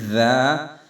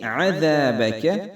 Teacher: زیڈ کی آواز نہیں آئے گی، ذا، اس میں سیٹی کی آواز گم ہو جائے گی